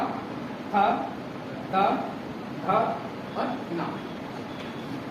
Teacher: वे व्यंजन जिनका उच्चारण करने में जीभ का अग्रभाग ऊपरी दांतों को स्पर्श करता है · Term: दंत व्यंजन